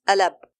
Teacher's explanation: For example, al-ab becomes alab. Here you don't pronounce the Hamza by closing the vocal cords, rather the Hamza is flowing, not blocked. · you don't pronounce a clear Hamza, neither an Alif, which is an elongation letter, but a sound between the two. For example, al-ab becomes alab. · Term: simplifying the Hamza, at-tasheel